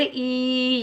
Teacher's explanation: बादी यरुद्दूनकुम मिन बादी, हमजा या ज़ेर ई, याए मद्दा एक अलिफ की मिकदार में खींच कर अदा करेंगे